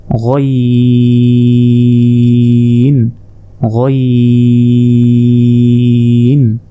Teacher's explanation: হলকের শেষ ভাগ হতে গইন উচ্চারণ হয়